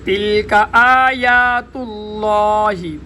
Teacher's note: لفظ اللہ کا لام موٹا، ما قبل حرف پر زبر ہے۔